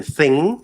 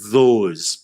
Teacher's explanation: a voiceless one as in thing, and then dh a voiced one as in those